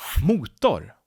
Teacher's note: 2 syllables. 1 main stress in the beginning and a secondary stress.